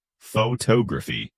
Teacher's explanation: photography, the second syllable gets the stress